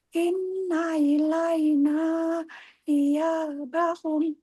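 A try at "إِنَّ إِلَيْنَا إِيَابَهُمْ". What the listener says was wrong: Nanya panjang Bu. Ilaina iya.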